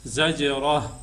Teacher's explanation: جب ہم وقف کریں گے تو یہاں پہ ہا کی آواز نکالیں گے